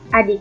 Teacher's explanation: A dengan bunyi rendah tak bulat